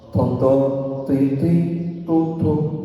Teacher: Jadi tidak ada angin yang lebay. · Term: tidak ada hamas